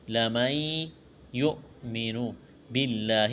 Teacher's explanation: لفظ اللہ کے نام سے پہلے زیر ہے، لفظ اللہ کے نام کو باریک کرنا ہے